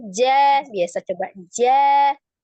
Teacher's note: Jim itu tengah lidah nih, tengah lidah ke langit-langit tengah.